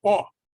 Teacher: In Ashkenazis, the Eastern European Jewish pronunciation, this is not ah, but oh.